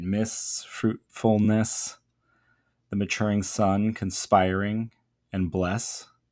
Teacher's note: a heavy reliance there on kind of longer O sounds and then the sibilant S